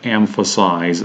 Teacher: the first syllable stressed the third one is secondarily stressed and the one in the middle the second syllable is an unstressed one